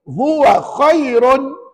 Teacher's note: Bukankah ra itu baris dua di depan Maka namanya R tebal kaedah satu